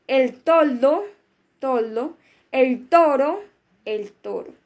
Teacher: se articula con el ápice de lengua apoyado en la cara interior de los incisivos